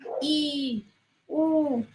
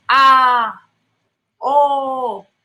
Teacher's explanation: Casi no abro la boca para decir I, U, por eso son cerradas. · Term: vocales cerradas